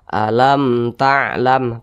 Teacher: Jadi ini mim sukun di depannya huruf ta, bukan huruf mim, bukan huruf ba, maka hukumnya izhar syafawi, dibaca jelas tidak berdengung.